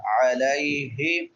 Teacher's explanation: علیہ لام کے بعد یا لین ہے، یا ساکن ما قبل فتحہ ہے، اس کو نرمی سے ادا کریں گے